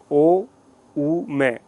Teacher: ओ, ऊ, मैं, जब आप ऐसा साउंड करते हैं तो ओ की आवाज में ओ, ऊ में होठ और ज्यादा आपके बाहर की तरफ होंगे और मैं साउंड आएगा आपके दोनों होठों को बंद करने के बाद